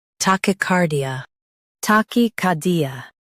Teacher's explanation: Stress car and keep D soft.